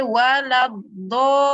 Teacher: Huruf mad ada tanda panjang jumpa dengan sabdu. Okey, jangan dibaca kurang. Kena baca 6 sahaja. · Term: mad lazim kalimi